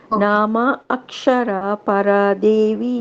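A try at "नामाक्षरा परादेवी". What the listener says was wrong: Don't split it as Nama Akshara. It is a single word. It is Namakshara.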